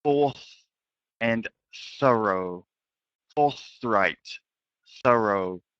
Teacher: both of them are the unvoiced TH. So remember, with TH, tongue must be between your teeth.